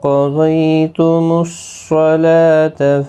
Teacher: قاف، ضاد اور صاد تینوں کو پر پڑھا جائے گا۔ حروف مستعلیہ کے حروف ہیں، باقی کسی بھی حرکت والے حرف کو کھینچنا نہیں۔